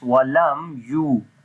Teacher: On the mim again we make izhar shafawi, like we make the clear sound of mim, and this waw we long here due to waw madda.